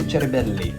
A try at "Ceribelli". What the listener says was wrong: This time it was a little bit worse than before. Like you went... Yeah, you went too much on the Italian accent.